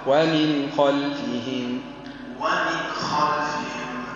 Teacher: اظهر النون هنا عند الخاء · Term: أظهر النون